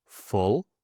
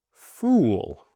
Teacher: the short sound is stopped almost, and the long sound is stretched